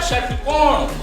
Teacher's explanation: षटकोण बोलेंगे तो कहां जाएगा, मूर्धन्य पे जाता है, पीछे जाता है, तालु के पीछे श जाता है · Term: मूर्धन्य श